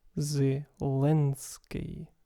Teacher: this case even though VL is in front of an e the correct pronunciation would have a dark l